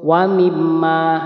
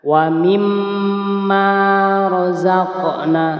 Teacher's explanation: boleh terlalu cepat ya tidak ada menanggungnya seperti contoh wimma salah yang betul adalah didengungkan dulu dua harakat